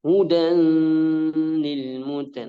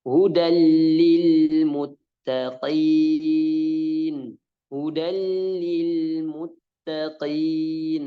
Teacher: Nah, langsung ke lamnya. Tanpa dia harus dengung. · Jadi tanwin bertemu dengan lam, maka cara bacanya diidghamkan ke lamnya tanpa dengung. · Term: idgham bila gunnah, idgham bila gunna